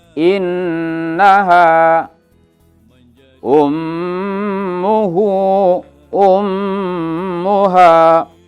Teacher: suara ditekan ditahan dua harokat dan berdegung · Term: gunnah